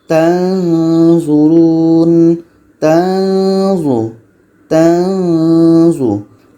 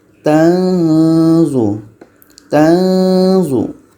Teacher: Ketika sebut huruf nun kita sudah merasakan huruf za.